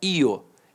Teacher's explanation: Então o I semivogal e o O vogal.